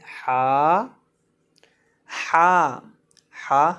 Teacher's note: حلق کے درمیان سے ادا ہوتا ہے